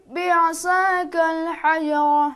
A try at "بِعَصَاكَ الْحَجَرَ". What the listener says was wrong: بعصا صاد थोड़ा मोटा